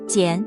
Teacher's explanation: jiǎn it uses the third tone the low dipping one like mǎ